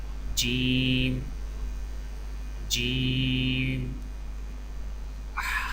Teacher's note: جیم، جیم کی ادائیگی میں زبان کے درمیان کو تالو کے ساتھ سختی سے لگا کر باریک آواز میں پڑھیں